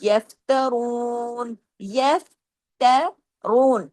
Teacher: رو کو ہیوی کرنا ہے، 2 حرکات کھینچنا بھی ہے زبر کی وجہ سے، اور مدہ کا حرف ہے اس لیے 2 حرکات کھینچے گا۔